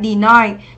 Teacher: chúng ta đọc là deny, trọng âm 2 và đây là âm I, deny. Ở đáp án C, chúng ta có từ sleepy, thì đây cũng là gì?